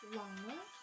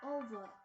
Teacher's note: the R sound is commonly deleted in the majority of the words in British accent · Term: deletion